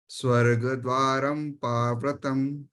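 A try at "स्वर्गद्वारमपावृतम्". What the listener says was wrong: Yeah, ma pe just stay a little longer, because when you say swarg dwaram pavratam, that means ma is half. But in Sanskrit, when it's complete, you're going to give it its due time.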